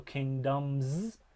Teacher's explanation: the plural s suffix in this case is zed because the m is voiced